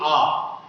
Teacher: जब हम आ का उच्चारण करते हैं तो हमारा जो मुंह द्वार है वो पूरा खुल जाता है। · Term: विवृत